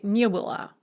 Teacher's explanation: And it always carries stress on the не.